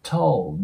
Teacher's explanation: 識してもらえたらと思います。で、その後の▁told▁you▁ですね。このまず▁told▁から見ていきたいと思うんですけど、これ▁told▁にならないように注意してください。 この▁L▁っていうのがダーク▁L▁と呼ばれる音になるので、歯の裏側ぐらいに舌を押し当てて ▁told▁って感じで、このルーの音は音だけで言うとうに近くなるんですね。日本語のあいうとかあいうえおのおですね。舌を当てた状態で、told▁って感じになります。で、このね、D▁の音は▁Y▁とリンキングすると、十という音に変わることが多いので、told▁you,▁told▁you▁っていう感じになります。で、その後の▁but▁ですね。で、この▁T▁の音は破裂音になるので、そのまま消してもいいし、今回みたいにちょっと強調するときです